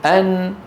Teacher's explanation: فيها شدة، الصوت يمر عن طريق الأنف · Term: النون